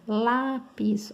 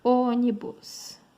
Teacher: paroxítonos, penúltima mais forte. Penúltima sílaba mais forte. E proparoxítonos, antepenúltima sílaba mais forte.